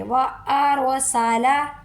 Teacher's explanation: یہ را کو پر کرنے کا بھی طریقہ یہی ہے جو میں نے بتایا ہے کہ را خود تو ساکن ہے لیکن اس سے پیچھے والا حروف دیکھیں گے اس پر زبر ہے، زبر فتحہ کی وجہ سے ہم را کو پر کر کے پڑھیں گے